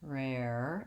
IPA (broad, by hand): rɛr